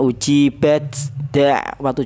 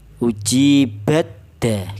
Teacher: Uji bad da jangan ya. Langsung ta ini diidgamkan ke dal.